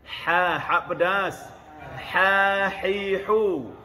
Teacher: Gunakan ha, makhraj tengah-tengah kerongkong. Angin keluar dulu.